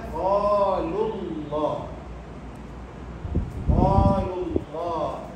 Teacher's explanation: bunyi daripada lu tersebut akan masuk ke dalam lafaz Allah